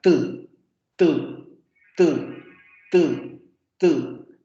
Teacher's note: Suenan como explosiones o son consonantes momentáneas porque ocurren de manera muy rápida.